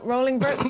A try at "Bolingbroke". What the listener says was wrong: Yeah, it should be Bolingbroke. Yeah, it should be a B, right. Yeah, it should be Bolingbroke, and the Henry IV.